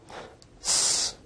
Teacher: S is a voiceless alveolar fricative